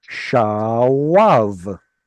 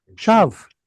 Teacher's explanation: it's a predictable change of yod and vav from a consonant to a vowel